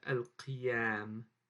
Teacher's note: the waw actually changes to a ya in the masdar al-qiyam because of the kasra under the qaf. Because it would be difficult to say al-qiwam.